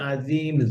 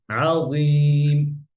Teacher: এটা জ ইতবাকের হরফ সবসময় মোটা থাকবে।